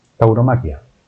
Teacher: Tauro aquí no es tónica, por tanto diptongo. Tauromaquia, la A es la tónica, tampoco aquí es tónica la I, por tanto son dos diptongos.